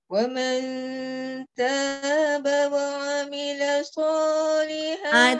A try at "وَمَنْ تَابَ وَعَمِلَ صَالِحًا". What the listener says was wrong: Nah, jangan naik.